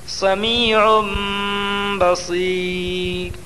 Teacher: دو پیش کی تنوین کو میم سے بدل کر غنہ اور اخفا کے ساتھ پڑھیں گے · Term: اقلاب